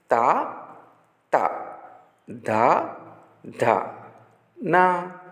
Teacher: ఈ తావర్గంలోని అక్షరాలను పలికేటప్పుడు నాలుక కొన పళ్ళను తాకుతోంది. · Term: దంత్యాలు